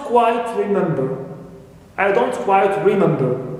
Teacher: intonation falls then rises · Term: full right intonation